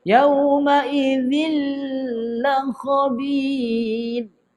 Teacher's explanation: Idgham bermakna masuk bila tu tidak gunnah, tidak boleh dengung. Tapi kenapa bacaannya seakan-akan dengung, kita kena keluarkan sifat lam. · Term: idgham bila gunnah